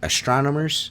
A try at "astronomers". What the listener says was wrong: Because there's no M. Astronomer. You're saying astronomers.